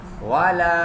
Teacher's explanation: الف مدہ. الف مدہ کو ایک الف یعنی 2 حرکات آسان لفظوں میں کہیں تو 2 سیکنڈ کھینچ کے پڑھیں گے